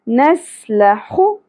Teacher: سین باریک ہوگا سیٹی کے ساتھ